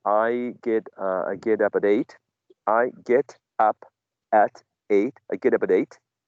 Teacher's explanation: there's only linking of consonant to vowel or from vowel to consonant